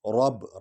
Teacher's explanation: ان بطش ربک رب را اور با کو اکٹھے پڑھیں گے کیونکہ با پر شد ہے اور یہ 2 بار حرف پڑھا جاتا ہے شد والا، اور را کو پر پڑھیں گے کیونکہ اس پر زبر ہے.